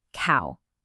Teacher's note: Your mouth starts in one shape and glides to another to make that ow sound. It's not a snapshot at all.